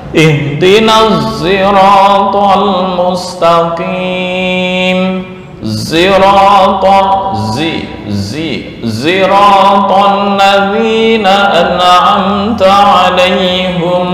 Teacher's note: Nah, ini yang disebut dengan ismamu as-sad bi az-zai. Maksudnya membaca ismam di huruf sod dirubah dengan za, mencampurkan antara sod dan za.